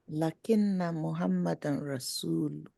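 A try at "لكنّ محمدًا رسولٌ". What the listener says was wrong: Yes.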